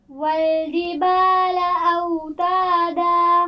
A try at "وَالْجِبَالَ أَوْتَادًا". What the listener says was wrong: جیم کے مخرج کو واضح کیجئے، زبان کے درمیان اور اوپر کے تالو کو ملانے سے ادا ہوتا ہے. والجبال، پھر پڑھیے. والجبال اوتادا.